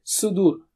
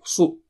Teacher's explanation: Sa is very thick and high.